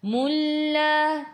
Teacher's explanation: Kalau nak sambung, kena masuk. Okey, tak perlu dengung. Masuk saja, tak perlu dengung. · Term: idgham bila gunnah